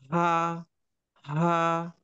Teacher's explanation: হা উচ্চারিত হয় দুই স্বরতন্ত্রীকে সামান্য খোলার মাধ্যমে। দুই স্বরতন্ত্রীকে সামান্য খোলার মাধ্যমে।